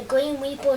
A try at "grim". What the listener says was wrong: Grim. Not green. You keep sounding like you're saying green. He's in black, not green.